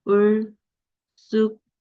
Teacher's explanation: 을숙도는 된소리 되기 두 번 일어나죠